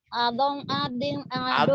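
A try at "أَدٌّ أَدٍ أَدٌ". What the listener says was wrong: Adon. Kok jadi adong? Gak ada engnya. Adon, adin, adun.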